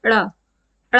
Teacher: उत्क्षिप्त व्यंजन देखिए, ये ऐसे व्यंजन हैं जिनको बोलते समय हमारी जो जीभ है वो एकदम से किसी साइड को छटक जाती है, किसी साइड को चली जाती है। जैसे अड़ा, अड़ा बोलेंगे तो हमारा जीभ में एक झटका सा लगता है